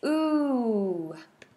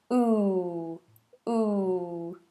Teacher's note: nice rounded lips ooh and we don't want to taper too much maybe a little taper but not a changing vowel